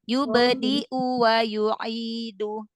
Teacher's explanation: Jadi nggak dibaca panjang. Langsung ke hamzah yang dhammah.